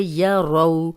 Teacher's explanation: واؤلین ہے، جزم والی واؤ، پیچھے را پہ زبر اور را کو موٹا بھی پڑھیں گے